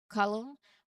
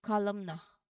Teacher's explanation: Next is column. Similarly, the n is silent here. It's pronounced as column. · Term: silent letter N